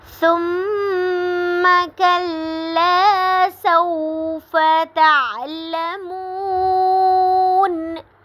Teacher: ثم پہ میم مشدد ہے، تو یہاں پہ غنہ ہو رہا ہے، کلا پہ الف مدہ ہو رہا ہے، سوف پہ واو لین، تعلمون پہ واو مدہ ہو رہی ہے کیونکہ واو ساکن سے پہلے پیش آ رہی ہے.